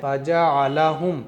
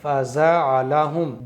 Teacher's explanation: جیم کو صاف صاف جیم ہی پڑھنا ہے، زا کی آواز نہیں آنی چاہیے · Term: جیم کی صحیح آواز